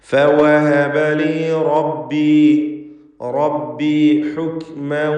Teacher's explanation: റബ്ബി റാഇന് തഫ്ഖീം കൊടുക്കുക, തടിപ്പിച്ച് പറയണം.